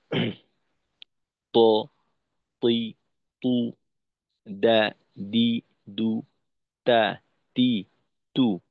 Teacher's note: জিওভার আগাকে সামনের উপরের দুই দাতের গোড়ার সঙ্গে লাগাই উচ্চারণ করি